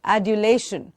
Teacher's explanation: Soft D from the teeth ridge.